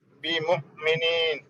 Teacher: حمزہ کے اوپر جزم آئے تو جھٹکا دے کے پڑھنا اس کو